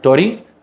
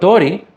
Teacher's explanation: tori, with a long first syllable, that's two moras, and then a second syllable that's one mora